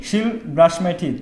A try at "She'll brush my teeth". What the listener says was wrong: আবার সুন্দর করে বলতে হবে, শিল ব্রাশ, এরকম না, শিল brush my teeth. She will brush my teeth. She will brush my teeth.